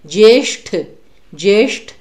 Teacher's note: ज्येष्ठ बोलते वक्त भी श को थोड़ा सा आपको जीभ को मोड़ना पड़ता है, जिससे कि सही उच्चारण निकले, लगे कि हाँ संस्कृत का शब्द है।